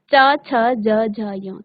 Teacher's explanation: च वर्ग का उच्चारण करते समय आपकी तालु को आपकी जीभ स्पर्श करती है